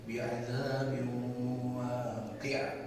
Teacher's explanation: huruf ba yang bertanwin ini tidak lantas dibaca jelas dengan bunyi n bi'adzabin, tapi langsung masuk ke dalam huruf yang selanjutnya, dilebur menjadi idgham bigun.